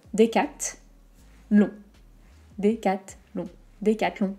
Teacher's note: On n'oublie pas la voyelle nasale, on, comme tout à l'heure, donc vers l'avant, l'air du nez, on.